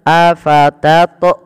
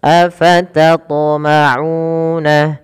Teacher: Harusnya qalqalahnya, pantulannya tidak ada menambahkan hamzah.